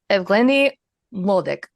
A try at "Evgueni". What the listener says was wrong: Yeah, the U is silent. It's just Evgeny. I don't think that U is even supposed to be there.